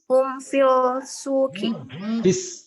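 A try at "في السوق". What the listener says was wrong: Fis kan syamsiyam ya. Fisuqi.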